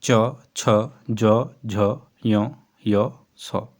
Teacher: व्यंजन जिन व्यंजनों का उच्चारण कठोर तालु से होता है वे तालव्य व्यंजन कहलाते हैं। इनके उच्चारण में जिहवा का अग्र भाग उठकर तालु को स्पर्श करता है।